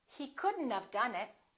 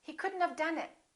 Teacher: we pronounce the D and then we connect the D next to the N and then the O disappears but the T also disappears